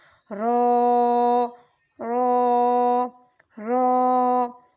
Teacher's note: رو کو ہم موٹا کر کے پڑھیں گے۔ حروف ہجا کی رو کو ہم ہمیشہ پر کر کے پڑھتے ہیں، کچھ اس طرح رو رو رو۔